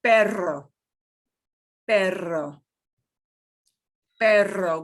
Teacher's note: this is the one that gets the strong rev it up trill or rolling your r